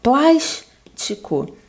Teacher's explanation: A mais forte é o plás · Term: proparoxítona